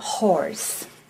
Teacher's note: lastly we have the glottal fricative which is the hub sound like in horse okay going down